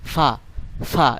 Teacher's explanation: সামনের উপরে যে 2 দাঁত আছে সেই 2 দাঁতটাকে আপনার নিচের ঠোঁটের সাথে আলতো করে লাগাবেন ফা, ফা, এরকম ভাবে উচ্চারণ করবেন।